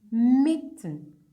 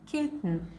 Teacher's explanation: Sometimes it is a glottal stop, like in mitten.